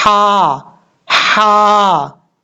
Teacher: लाम के बाद जो हा है ये हा बरीक है। ये हुरूफ हल्की में से जो हा आता है जीम की शक्ल में, ये वो हा है।